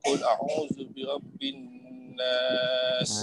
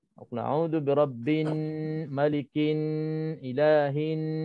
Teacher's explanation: Nun bertasydid. Ada nun bertasydid, harus baca 2 dengung, 2 harus berdengung dengan 2 harakat, seperti macam surat An-Nas, qul a'udzu birabbin nas. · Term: wajibul ghunnah